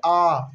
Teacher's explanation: विवृत उसे कहते हैं जिनमें हमारा मुंह सबसे अधिक खुलता है आ बोलेंगे तो मुंह सबसे अधिक खुलेगा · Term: विवृत स्वर